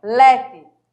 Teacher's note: a paroxítona, ela tem que ser pronunciada forte